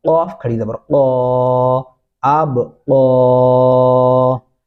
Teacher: قاف کے اوپر کھڑی زبر ہے اس کو لمبا کیا جائے گا ایک الف کے برابر